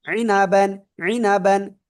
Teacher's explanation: আইন গলাটা চেপে পড়তে হবে